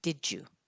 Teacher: the d and then the y sounds like a j